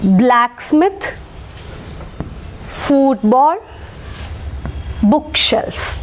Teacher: we will mark stress on the first syllable